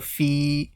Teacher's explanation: So ya sakin stretches the kasra letter. So this is called a mad asli.